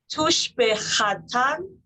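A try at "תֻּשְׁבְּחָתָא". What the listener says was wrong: There's no mem there. It's tush bechata.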